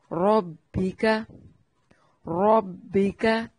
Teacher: را کو موٹا پڑھیں گے، کاف کو باریک پڑھیں گے